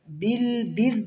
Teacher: را کے نیچے زیر ہے نرمی کے ساتھ پڑھیں گے